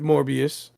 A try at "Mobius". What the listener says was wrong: You guys keep saying Morbius. It's Mobius. There's no R. Morbius is the freaking vampire.